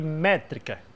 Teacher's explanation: a palavra métrica vai parar no mé, porque ela é a sílaba forte da palavra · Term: sílaba tônica